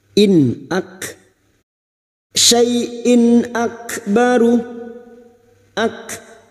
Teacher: Kaf sukun yang memiliki sifat syiddah dan hamas